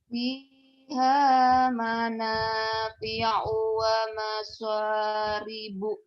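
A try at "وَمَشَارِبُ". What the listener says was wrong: wa masya, bukan wa maso, wa masya.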